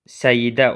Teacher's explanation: Hərflərin sayı səslərin sayı ilə eynidir. Səidə sözünün tələffüzündə səidə olur. Yəni y artırılır